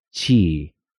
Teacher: la E se pronuncia más como una I suave en inglés